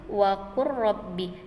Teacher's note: Itu contohnya di dalam kolom itu waqur rabbi, dia dimasukkan ke dalam huruf selanjutnya ya. Lam dengan ro berarti dimasukkan huruf selanjutnya. Kemudian yang contoh kedua qaf dengan kaf ya, huruf qa dan ka ya. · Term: idgham mutaqaribain